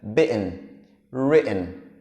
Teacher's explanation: O som dos dois T's juntos, ele é um som para dentro.